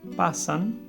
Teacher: se estrecha la cavidad bucal y deja pasar el aire y es alveolar porque el ápice de la lengua se apoya en los alveolos es decir en la parte que hay en la parte rugosa